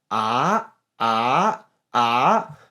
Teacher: Second tone goes up like this.